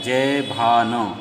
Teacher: जभान मतलब ह्रस्व, दीर्घ और ह्रस्व। ठीक है, या लघु, गुरु, लघु। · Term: जगण